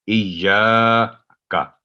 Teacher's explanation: یا پر تشدید ہے, اور جب بھی کسی حرف پر تشدید تو وہ ڈبل ٹائم لیتا ہے, ایا پہلے ایج پھر یا, ایاک, اور کا بھی باریک آواز میں, ایاک نہ ہو, ایاک.